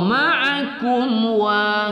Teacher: Musaddiqan lima, ma kita baca satu alif dua harakat. Ma'akum mim sukun bertemu waw, ma'akum wa tidak kita dengungkan pada izhar syafawi